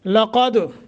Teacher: قاف کو موٹا، دال پہ قلقلہ۔ وعدنا، یہاں بھی قلقلہ، وعدنا، اور نا کو 1 سیکنڈ کے لیے مد کریں گے۔